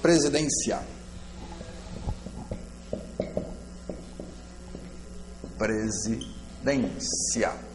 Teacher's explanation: o que que acontece com o ditongo ele é mais forte no final ou seja o som tá crescendo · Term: ditongo crescente